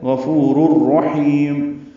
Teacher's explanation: مدہ ہے، دو حرکات لمبا کریں گے، را پر پڑھیں گے، را کو را سے ملانا ہے، رر ادغام کامل ہے